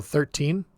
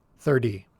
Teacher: the teen you'll hear clearly the t the t sound and sometimes you'll hear the n sound pretty clearly · So we've got the number 13 and the number 30, and they're going to be pronounced a little bit differently at the end. So the teen, you'll hear clearly the T sound, and sometimes you'll hear the N sound pretty clearly. So 13, 30. Now notice for the tens, this T sound in the middle will get changed into a D sound.